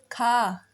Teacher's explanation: जैसे का है खा, ग, घा। देखिए इन घा और खा में ज़्यादा आपको सांस बाहर आ रही है, सांस वायु आपकी ज़्यादा बाहर आ रही है। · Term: महाप्राण